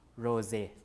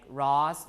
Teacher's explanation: it will become a Z voice version when is close to a voice sound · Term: voicing assimilation